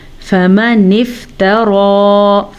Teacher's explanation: تا کو لمبا نہیں کریں گے، تا پہ زبر ہے. ہاں را کو ہم کھینچ کے پڑھیں گے کھڑی زبر کی وجہ سے